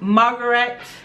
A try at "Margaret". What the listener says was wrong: Margaret. There's an A to the end. Margaret.